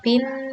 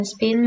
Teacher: walaupun berbeda dalam aspirasi tapi artinya tetap sama